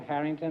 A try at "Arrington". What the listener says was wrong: I'm Arrington. like Harrington without the H. It's like Harrington without the H. It's English.